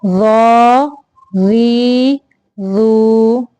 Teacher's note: ظا، ظا کی ادائیگی کے وقت زبان کو دانتوں کے سرے سے لگانا، یعنی سامنے والے اوپر کے جو دانت ہیں ان کے سرے سے لگا کے ظا کی ادائیگی کرنی ہے. آواز کو موٹا رکھنا ہے